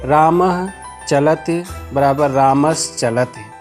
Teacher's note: रामः के अंत में विसर्ग है, विसर्ग के पश्चात चलति का च व्यंजन वर्ण है, इसलिए रामः के विसर्ग को तालव्य सकार होकर रूप बन गया रामस् चलति।